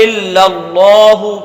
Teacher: تو لا کو ایک الف کھینچیں گے، حمزہ کو نہیں کھینچیں گے، پھر لام کو ایک الف کھینچیں گے۔ الا اللہ میں لام اللہ کو موٹا یعنی پردہ کریں گے اور اللہ کے لام کو ایک الف کے برابر کھینچ کے پڑھیں گے۔